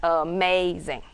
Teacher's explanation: it's 0, 1, 0, means it's unstressed, stressed, and unstressed